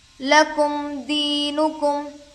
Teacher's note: मीम पर जज़म है, मीम साकिन होगा, जिस हरफ पर जज़म हो उसे पिछले वाले हरफ से मिलाकर पढ़ते हैं। या साकिन से पहले ज़ेर है, याए मद्दा होगा, थोड़ा खींचें और मारूफ पढ़ें।